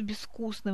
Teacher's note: В слове «безвкусно» мы пишем букву «з», а произносим глухой согласный «с»